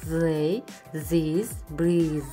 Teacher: Сонымен қатар бұл тіркес The дыбысын береді, яғни тіліміздің ұшы тістерге тізіліп айтылады